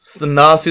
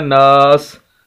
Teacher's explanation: آخری حرف سین ہے، اور وقف کا اصول یہ ہے کہ آخری حرف کو ساکن کر دیا جائے، تو ہم آخری حرف سین کو ساکن کریں گے۔ جیسے ہم اس کو ساکن کریں گے اس کی زیر ختم ہو جائے گی۔ ساکن مینز کہ جس طرح یہ جزم ہے، یہ سین کے اوپر بھی جزم آ جائے گی، تو یہ ہمارا لفظ جو ہے وہ پورا ہو جائے گا۔